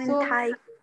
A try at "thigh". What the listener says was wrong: Thigh, don't say like that. Because it seems like you are questioning me, right? Aisa lag raha hai ki tum mujhe jawab de rahe ho. Matlab, sorry, pooch rahe ho.